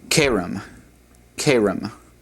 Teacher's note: notice that the accent on all of these is on the second from the last syllable